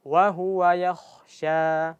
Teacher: Jadi pastikan ketika kita baca K itu mengalir nafas.